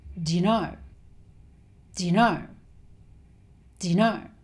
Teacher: So he shortened 'do' to just 'd'. And he also shortened 'you' to 'yuh', with the schwa sound.